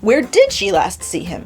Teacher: If we stress the where, the location matters most.